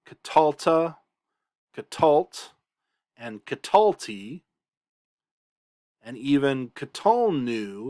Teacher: for those the accent is on the second to last syllable instead of the final syllable